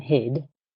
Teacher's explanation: in the second word the final consonant is voiced and that make the vowel sound a little bit longer